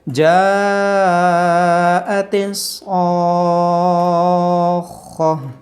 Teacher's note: گول تا کو ہا میں بدل دیں گے اور پیش کو جزم کے ساتھ بدل دیں گے